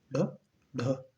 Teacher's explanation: उत्क्षिप्त का मतलब होता है कि जीवा बहुत तेजी के साथ ऊपर उठती है, मूर्धा को टच करती है, उतनी तेजी के साथ नीचे डाउन हो जाती है।